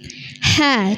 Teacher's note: dari tengah tenggorokan juga keluar huruf ha